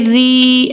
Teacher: کاف زبر کا، را یا زیر ری. اب یہاں پہ ہم را باریک پڑھیں گے کیونکہ یہاں پہ را کے نیچے زیر ہے